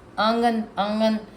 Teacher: انگن تو کوئی نہیں پڑھتا اس کو نا, آنگن پڑھتے ہیں, آنگن, آنگن پڑھتے ہیں نا, آنگن, آنگن, ناک میں جا رہی ہے نا وائس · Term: غنہ